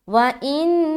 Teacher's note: چونکہ نون کے اوپر شد ہے تو رکاوٹ کریں گے جو کہلاتی ہے غنہ کرنا. وَإِن، ناک میں آواز روک رہے، ان، اس کے بعد نا کا، نون زبر نا، کاف زبر کا، دونوں کے اوپر زبر کی حرکت ہے.